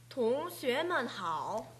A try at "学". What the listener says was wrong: 学. 지금 시 발음이 혀끝이 올라가 있어요. 시, 지치시 할 때는 혀끝이 아랫니 뒤에 붙어 있어야 됩니다. 그리고 혀를 전체적으로 살짝 밀어줍니다. 시, 쉐, 그렇게 나야 됩니다. 조금 전에 그렇게 나지 않았습니다. 쉐, 동쉐,